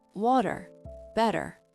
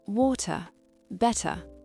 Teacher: ce T devient un flap T, un son très doux proche d'un D rapide